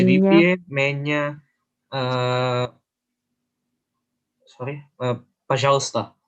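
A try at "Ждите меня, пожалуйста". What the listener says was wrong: Ingat penekanannya dia jadi Y-nya jadi I. Min-nya. Zditye minnya, пожалуйста.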